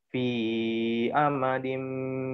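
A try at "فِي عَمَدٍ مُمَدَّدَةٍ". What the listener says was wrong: Fi amadin. Dia nggak ada kaitannya sama hamzah. Dia ain. Lain. Lain ain, lain hamzah.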